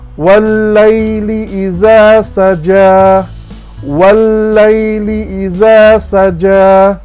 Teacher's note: Sebab sebenarnya di sini ada dua lam. Lam yang pertama itu tidak disebut pun. Lam yang kedua sahaja disebut dan disyaddahkan. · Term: idgham syamsi